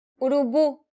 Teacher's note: This word ends with the vowel U, meaning the stress should be on the last syllable.